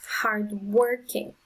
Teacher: so the syllable with the strongest sound is the second one